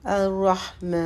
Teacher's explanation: میم کے اوپر جو ہے وہ کھڑا زبر ہے تو اس کو 2 حرکت لمبا کریں گے